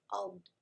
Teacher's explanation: So you're lengthening that makhraj over the length of the tongue, over the edge of the tongue. Ad. And it's unique to dad. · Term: istitala